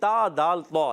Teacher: تا کا مخرج ہے زبان کا سرا اوپر کے دانتوں کی جڑوں سے